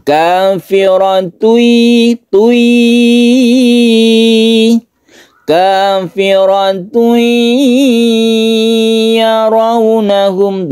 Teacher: tanwin ini melebur atau masuk ke ya, sehingga ketika masuk ke ya itu kita dengungkan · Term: idgham biguna